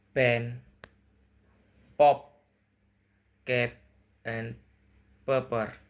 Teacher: P. Voiceless bilabial plosive. Lip pressed together and relaxed with a puff of air.